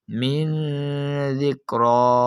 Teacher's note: نون ساکن کے بعد حرف دال جو کہ حروف اخفا میں سے موجود ہونے کی وجہ سے ہم اس نون ساکن میں گنا کر کر پڑھیں گے۔